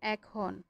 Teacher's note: সেটাই বলছে শব্দের প্রথমে যদি এ থাকে এবং তারপর অ আ থাকলে, স্বরেয় বা স্বরেয়া যদি থাকে, সাধারণত সেই একারের উচ্চারণ বিবৃত হবে, মানে এর মতো হবে।